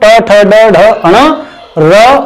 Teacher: मूर्धन्य व्यंजन वे व्यंजन हैं जिनमें तालु से पीछे की जगह का उच्चारण में प्रयोग किया जाता है।